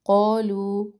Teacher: قولو قو الف مدہ، لو یہاں پہ بھی مد ہے، دو الف برابر اس کو پڑھنا ہے